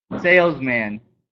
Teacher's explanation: the unstressed syllable is reduced and it becomes neutral and short it's called the schwa